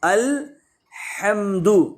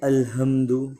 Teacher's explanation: گلے کے 3 حصے ہیں، ایک شروع کا حصہ، ایک بیچ کا حصہ اور ایک آخری حصہ. تو یہ ہا گلے کے بیچ والے حصے سے نکلتی ہے